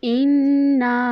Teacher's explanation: इन्ना को जब हम पढ़ेंगे हमज़ा को नून के साथ मिलाएंगे